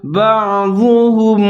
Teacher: عین ساکن ہے، با کے ساتھ ملا کر پڑھیں گے اور عین کو بھی ظاہر کر کے پڑھیں گے، آگے ضاد اس کو موٹا کر کے پڑھیں گے۔